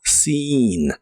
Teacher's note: la doble e se pronuncia como una i larga o doble en esta palabra